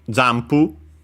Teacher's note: the N on its own but yeah actually pronounced as M because of the following P